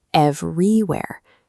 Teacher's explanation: A native English speaker stresses the first syllable, but the voice placed the stress on the second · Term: Russian phonological transfer